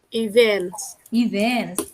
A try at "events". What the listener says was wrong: Gaya dikit ya dibacanya events, bukan event ya. Yang betul adalah events ya.